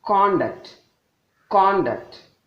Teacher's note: the first one is a noun when the emphasis is more on the beginning the second one is a verb since emphasis is given on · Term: stress